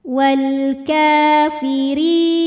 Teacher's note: Huruf ra dibunyikan secara tarqiq sebab ra berbaris kasrah, maka dibaca tipis pangkal lidah datar.